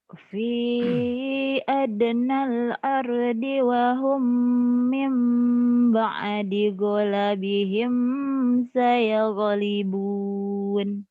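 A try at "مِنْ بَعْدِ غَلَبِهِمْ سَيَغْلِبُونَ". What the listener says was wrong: Ghalabihimnya jangan ditahan ya idhar.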